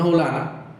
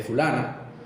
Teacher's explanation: La mayoría pronuncian la F aspiradas como X, que es el sonido de la I, de la J, perdón.